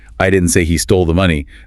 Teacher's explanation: the intonation on I implies someone else said it.